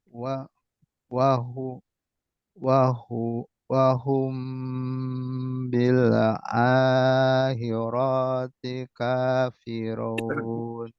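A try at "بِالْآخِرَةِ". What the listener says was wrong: roknya pendek. Akhiroti. Akhiroti.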